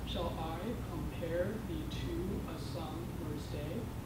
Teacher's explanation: The first syllable is unstressed, and it is followed by a stressed syllable. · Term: iambic pentameter